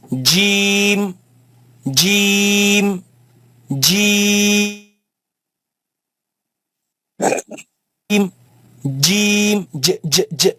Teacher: it comes from the middle of the tongue. Middle of the tongue. Touching the front palate and top roof. Right, you have the J sound in English, J sound, J, as we would say gym, But this has a yeah in the middle.